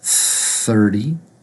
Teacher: two T's first one th together the tongue between the teeth the second T is actually actually going to be pronounced with a D sound